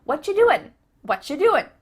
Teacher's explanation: becomes cha whatcha doing you might notice too extra tip that the end of the word doing that g also gets cut out